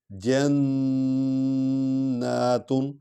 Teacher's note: یہ نون پر شد ہے اور اس میں نون غنہ کریں گے اور لمبا بھی کریں گے کیونکہ اس پر کھڑا زبر ہے.